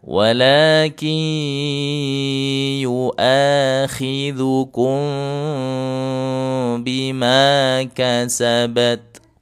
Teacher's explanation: ada dua cara membacanya ikhfa syafawi yang sering saya sampaikan ada cara idbaq merapat bibir atau furjah merenggangkan sedikit bibir